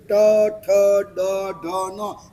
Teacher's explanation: जो शब्द बोलने से आपकी जी्हा मस्तक को टच करती है। उसे कहा जाता है मूर्धन्य।